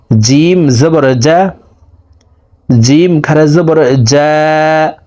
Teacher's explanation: জিম হরফকে জিব্বার মধ্যখান থেকে আদায় করে উচ্চারণ করে পড়বো